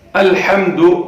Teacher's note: یہاں پہ لام ساکن ہے، اس کو ادا کرتے وقت قلقلے کی آواز نہیں ہونی چاہیے۔ الحمد، لام کو ادا کرتے وقت جو ہماری زبان ہے یہ اوپر تالو کے ساتھ چپک جانی چاہیے۔